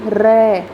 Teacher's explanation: प्रकंपित वर्ण कहलाता है। जैसे र, हम र को बोल के देखते हैं तो हमारी जीभ 2-3 बार कंपन करती है, इसलिए र को बोला जाता है प्रकंपित वर्ण।